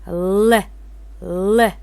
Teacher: Капталчыл үнсүздөргө Л тыбышы кирет. Бул үнсүздү айтканда тилдин учу үстүңкү тиштерге такалып, аба тилдин эки капталындагы ачыктар менен өткөндө жасалат.